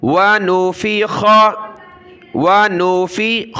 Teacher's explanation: خا زبر خا، خا کو گلے سے نکالا